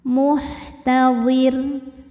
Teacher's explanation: Jika berhenti di huruf ro, maka ro-nya disukunkan dan dibaca secara tarqiq. Kenapa? Karena sebelum ro sukun ada harokat kasrah, maka ro-nya tipis.